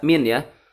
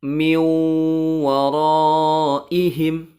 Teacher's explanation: nun sukun bertemu dengan huruf wawu dan sukunnya dimasukkan ke huruf wow dan ditahan tiga harokat suaranya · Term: idgham bighunnah